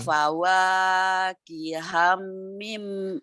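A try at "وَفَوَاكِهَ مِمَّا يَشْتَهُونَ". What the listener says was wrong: kiham. Kalau kiham ada tasdid. kihamim.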